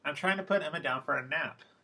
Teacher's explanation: is that in general they follow the new information rule so nap is the last bit of new information so there will be a focus pitch there